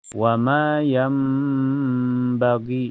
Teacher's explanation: Cara bacanya nun sukunnya diganti dengan bunyi mim yam dan ditahan sampai terasa ke hidung. Yam bagi, dan cirinya ya kalau ada tanda mim kecil rengkolnya ke bawah itu bertanda kita ketemu hukum iqlab ya, dan huruf iqlab cuma ada satu yaitu ba.